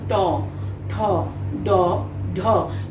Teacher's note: জিহ্বার অগ্রভাগের নিচের অংশটা যেটাকে আমরা মূর্ধ বলি, এটা তালুকে স্পর্শ করে বলে এটার উচ্চারণ স্থান মূর্ধা, এবং এগুলোকে আমরা মূর্ধন্য বর্ণ বলতে পারি।